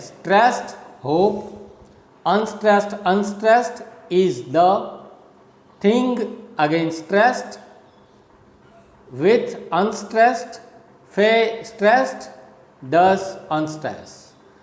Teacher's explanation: the rhythm of this poem is down and up, again down and up, and last it is down